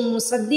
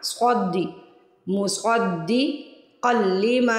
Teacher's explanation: अब यहाँ पे देखिए, इसको मुसद्दी नहीं पढ़ना, सद्दी नहीं, स्वादी। स्वाद को मोटा भी पढ़ना है और स्वाद की आवाज़ आनी चाहिए, सीन की आवाज़ नहीं आनी चाहिए। सद्दी नहीं पढ़ना, स्वादी मुस्वद्दी क़ल्लिमा।